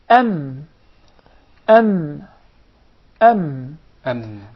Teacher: articulated by closing the two lips together